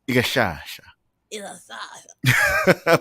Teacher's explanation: It presses against the back of the teeth on the S sound